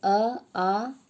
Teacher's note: कंठ से हम उच्चारित करते हैं अ आ को और क ख ग घ अंग य और ह को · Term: कंठ वर्ण